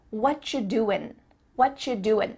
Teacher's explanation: the end of the word doing that g also gets cut out